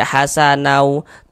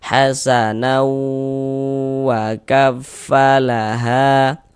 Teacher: tanwinnya masuk ke huruf wau melebur ke huruf wau. Kemudian didengungkan sepanjang dua harakat. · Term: idgham ghunah, idgham bi gunnah